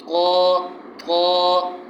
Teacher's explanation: قا موٹا کریں گے اور تھوڑا سا قلقلہ والا بھی اس میں اسٹائل جو آواز ہلے گی، اور آخر میں الف · آخر میں الف ہے، ایک الف کے برابر کھینچ کے پڑھیں گے